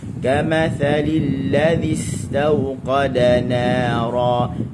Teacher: Ujung lidah di ujung gigi atas untuk huruf zal.